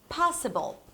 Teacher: in the word possible the stress falls on the first syllable